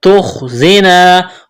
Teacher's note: تخزینا خا کو موٹا کرنا ہے، زا میں سیٹی کی آواز پیدا کریں گے، یہ الف مدہ ہے، الف سے پہلے زبر ہے تو ایک الف کے برابر کھینچنا ہے.